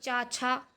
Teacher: अघोष व्यंजन जिनमें स्वर तंत्रियों में कंपन ना हो। तो प्रत्येक वर्ग का पहला, दूसरा व्यंजन अघोष अघोष होता है और तीसरा, चौथा, पांचवा जो होता है वो सघोष होता है।